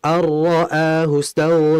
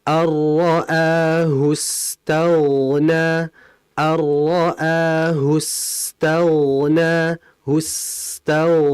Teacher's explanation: Sin ghainnya harus dibaca mengalir karena dia memiliki sifat rikhawah atau rakhawah.